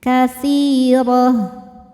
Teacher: La hukumnya mad tabi'i zahiri, sebab ada alif yang sebelumnya berharokat fathah. Cara bacanya panjang 2 harokat.